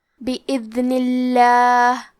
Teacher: آخری میں نون کے نیچے زیر ہے لہذا ہمیں لفظ الجلالہ مطلب کلمت اللہ کے لام کو پتلی آواز میں پڑھنا ہے. · حرف الذال کی ادائیگی زبان کے سر اور اوپر والے دانتوں کے اندرونی کناروں سے ہے. کیونکہ یہاں دال ساکن ہے تو ہمیں دال کو ظاہر کرنا ہے.